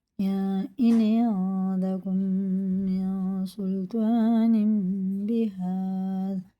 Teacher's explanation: نون ساکن میں سین آ رہا ہے، اخفا غنہ ہوگا اس میں بھی، اور یہ ادغام میم ہے، تنوین کے بعد چھوٹا سا میم آ رہا، پھر با آ رہا، تو یہ غنہ اور اخفا کے ساتھ پڑھا جائے.